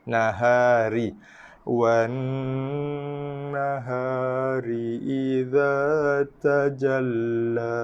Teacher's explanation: Ra baris bawah, kasrah. Straight to the point. Kita baca dengan nipis